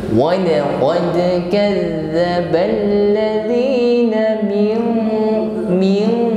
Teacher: ada dal yang bersukun, maka jangan ragu-ragu kita tampakkan bunyi qalqalah, pantulan yang ringan